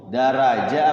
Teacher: Tafkhim ya, hukum al ra-nya tafkhim tebal ya.